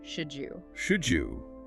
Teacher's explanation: When a D sound comes just before a J sound like the Y and U, they often merge. D plus J equals equals the D sound. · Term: D and U blending